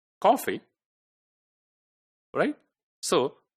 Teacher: the first syllable is stressed cough cough and fee then the second one is unstressed